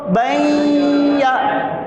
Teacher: دو زبر کی تنوین کو یا میں ملا دیا۔ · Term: ادغام